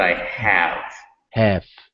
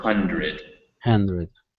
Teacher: a lot of your h sounds um they kind of come as as little as hissing whereas in english they're very breathy